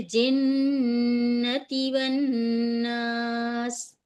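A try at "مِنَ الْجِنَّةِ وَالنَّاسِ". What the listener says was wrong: ती पे बिल्कुल नहीं खींचे, ती पे बिल्कुल नहीं खींचे, रुक जाएं।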